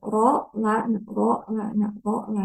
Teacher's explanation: Jadi ro paling dalam, lam di tengah, nun di ujungnya gitu ya